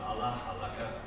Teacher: the historically high tone verbs with he will cut is pronounced with a low on that initial syllable